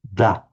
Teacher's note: that is a dental. The tip of the tongue is behind the teeth, da. However, the ja sound, you don't start with the tongue behind the teeth, you start with the tongue a little bit further back.